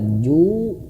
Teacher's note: di sini ada huruf waw, dia panjang 2 harokat